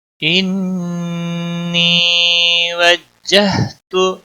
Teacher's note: ان نون مشدد پر غنہ ہوگا، یا مدہ ہے ایک الف کے برابر کھینچ کر پڑھیں گے۔